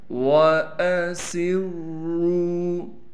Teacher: وَأَسِرُّوا، واو کے بعد حمزہ ہے، الف نہیں ہے، اس بات کا ضرور خیال کرنا ہے کیونکہ الف پر زبر آ گیا، اب یہ حمزہ بن گیا، واو کو بالکل نہیں کھینچنا۔ سین میں سٹی ادا کرنے کے ساتھ سین کو را سے ملائیں گے، را پر تشدید ہونے کی وجہ سے تھوڑا ٹھہراؤ کریں گے